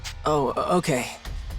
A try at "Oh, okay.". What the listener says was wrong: It's not oh, okay. That's two different words. This is a stutter. Not oh, okay.